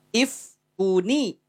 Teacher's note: tanwin bermetamorfosis berubah menjadi Nun keluar dalam bentuk Nun dikasih harakat kasrah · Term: Nun wiqah